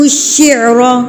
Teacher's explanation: را کے اوپر زبر تو اس کو پر کر کے پڑھیں گے